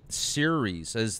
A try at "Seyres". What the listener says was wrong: It's actually pronounced Seyres, as if it was spelled S-E-Y hyphen R-E-H-S, or A, you know, Seyres. It's not series like the World Series. It's Seyres.